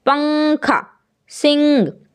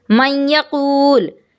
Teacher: صفت آپ کو ادا کرنی ہے، اور وہ کیسے ہوگا کہ نون کے بعد جو حرف ہے اس کے ساتھ ملا کر کے نون کو صرف ناک سے نکالیں گے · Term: غنہ